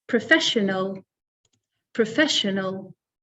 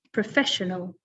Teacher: So the stress is on the second syllable with this one, professional.